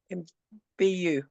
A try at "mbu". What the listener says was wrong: No, bu is mbu, mbu. don't try to separate M and B in your pronunciation. Pronounce it as one word, one syllable. Mbu, mbu.